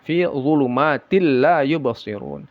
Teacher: dimasukkan tapi tidak didengungkan, tidak baca tin tapi til masuk dia tanwin ini ke lamnya tapi tidak ada gunah. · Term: idgham bila ghunah